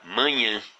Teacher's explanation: apenas para indicar que esse A, que essa vogal A aqui, da segunda sílaba, deve ser pronunciado com som fechado. E então não está, esse tio aqui não está indicando a sílaba tônica da palavra manhã, mesmo sendo essa segunda sílaba a sílaba tônica da palavra. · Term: diacrítico de nasalização